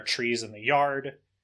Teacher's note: There's also TR, which turns a lot into ch